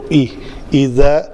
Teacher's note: زال کا مخرج جو ہے وہ جب نوک لسان ثنایا اولیہ کے ساتھ آ کے ٹکراتی ہے تو زال ادا ہوتا ہے